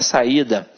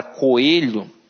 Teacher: a junção de duas vogais pronunciadas destacadamente separadas uma vez que há duas sílabas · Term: hiato